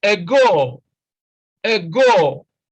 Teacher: Now, again, you see that stress is on the second syllable.